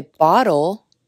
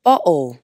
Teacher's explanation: La explosión de aire, T, ha sido eliminada. En el acento más común de los EEUU, no es muy típico pronunciar la T al medio de una palabra así—con la excepción de las palabras que tienen un sonido de T seguido por una N.